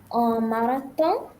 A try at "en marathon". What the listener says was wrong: Okay, very good.